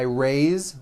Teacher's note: even though it is spelled with an S, it's pronounced with a voiced Z. Raise. So we say I raise with a voiced Z ending, and he raises.